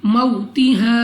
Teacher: वाव साकिन से पहले जबर वाव लीन बगैर खींचे बगैर झटका दिए पढ़ेंगे। बअद मौ अलिफ से पहले जबर अलिफ मद्दा 2 सेकंड तक खींच कर पढ़ेंगे